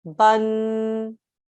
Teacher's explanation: two counts so here this bar would be read as bun a nasal sound for two counts